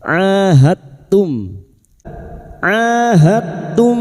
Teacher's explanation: ain fathah diikuti alif dua harakat kita panjangkan · dal sukun bertemu ta memasukkan dua huruf yang sejenis makhrajnya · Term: mad thabi'i, idgham mutajanisain